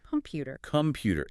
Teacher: The stress is on the pu. The O is starved of energy, so it degrades into a lazy schwa.